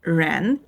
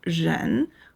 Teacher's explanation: in Chinese, the R is much lighter. Your tongue moves toward the roof of your mouth, but it doesn't curl tightly. It stays more relaxed and the sound comes out softer, almost like a slight buzz feeling at the beginning. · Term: the Chinese R